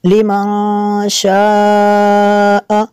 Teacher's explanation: نون ساکن کے بعد شین حروف اخفا میں سے ہے، یہاں پہ اخفا ہوگا اس لیے یہاں پہ غنہ کریں گے۔ لمن شاء اس کے اوپر جو مد ہے مد متصل ہے کیونکہ حمزہ اسی کلمے میں ہے۔